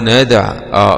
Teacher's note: الدال فيها قلقلة لأنها ساكنة من حروف قطب جد